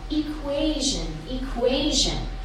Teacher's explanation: It has 3 syllables. Which syllable has the stress? The second, right?